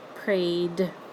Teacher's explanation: after you hear the A sound in pray, when you add ED, you're just hearing D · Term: D sound